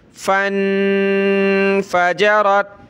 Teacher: नून साकिन है, नाक में आवाज़ पैदा करेंगे।